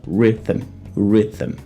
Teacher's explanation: antes desse M a gente tem mais uma vez o tal do schwa sound